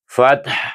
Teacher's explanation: Kalau kita berhenti pada ha kita a akhirkan suara itu pada huruf ha di tengah halkum